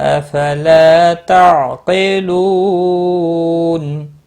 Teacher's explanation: افلا، الف مدہ ہے، ایک الف کے برابر کھینچ کر پڑھیں گے۔ تا، عین ساکن کو ہلانا نہیں ہے، قاف مستعلیہ پر پڑھا جائے گا۔ لو واو مدہ ہے، ایک الف کے برابر کھینچ کر پڑھیں گے۔